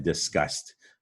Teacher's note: But disgust, you hear a D, a T. That D makes a T sound in disgust. So that's the spelling tip here, is it's not a T, it's a D, disgust.